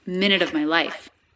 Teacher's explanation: Now here the V sound isn't dropped. It is said lightly.